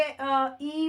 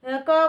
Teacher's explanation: कंपन हो रही है तो इसे कहेंगे सघोष। क बोलेंगे तो कंपन नहीं हो रही है ना।